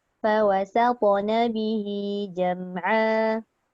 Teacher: Sin itu nipis. Jangan disebabkan to tu tebal, kita ikut jadi sohod.